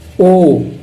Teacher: आई, फिर आप देखोगे कंठोष्टम का, कंठ और ओष्ठ देखो, ओ होठ भी गोल शेप में हो रहे हैं और कंठ यानी कंठ से आवाज भी आ रही है